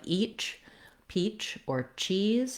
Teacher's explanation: This is an affricate sound. It starts with the tongue in the position for the T, drops down for the to the position for the SH sound, the ch sound.